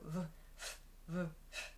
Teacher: So I have to use my vocal cord v to make the v sound.